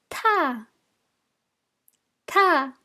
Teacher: It's a high and aspirated letter, and it's ta, ta.